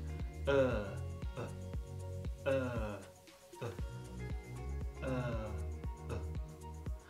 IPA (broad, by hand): ɜ: